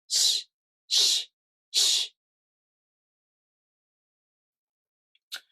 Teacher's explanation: with the [ɕ] sound, the place of articulation is the back of the gum ridge, not the front. · The tip of the tongue touches the gum ridge behind the bottom teeth. The front part of the tongue is raised towards the back of the gum ridge.